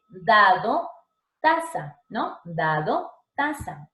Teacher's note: Ahora, si hablamos de los dentales, vamos a hablar que el ápice de la lengua, o sea, la puntita de nuestra lengua, tiene que rozar los dientes superiores